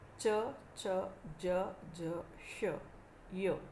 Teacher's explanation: टाळूचा पुढचा भाग जेव्हा उच्चारण स्थान असतं तेव्हा त्यांना तालव्य व्यंजनं म्हणतात. मराठीत च, च, ज, ज, श, य ही व्यंजनं तालव्य व्यंजनं म्हणता येतील.